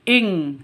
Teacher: In kuntum, non mati bertemu dengan kaf. Samar didengungkan, siap-siap ke huruf kafnya. Non matinya ditambah dengan ng. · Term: ikhfa hakiki